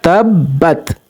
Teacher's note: तब्बत, ता जो है वो अपने पहले शद वाले हरफ से मिल रहा है, तो यहाँ पर तब्बत, इस तरीके से इसको पढ़ेंगे।